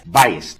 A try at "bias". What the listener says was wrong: No, bias. B-I-A-S. There's no T at the end. Bias.